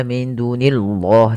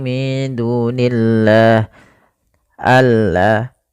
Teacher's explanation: Kemudian nillahi pada lafal Allah ketika dia didahului dengan kasrah tidak boleh dibaca tebal lamnya